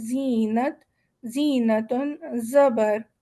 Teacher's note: ز کی آواز ہے، لال کی آواز ہے ذکرا. ز کی آواز ہے وصل والی، باریک ہے، سیٹی والی ہے